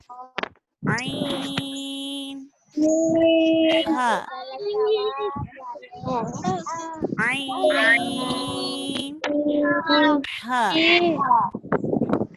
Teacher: اب آخر کے حصے سے کچھ اوپر جائیں گے تو حلق کا جو درمیانی حصہ ہے یعنی گردن کا بیچ کا حصہ ہے, وہاں سے یہ 2 حروف ادا ہوں گے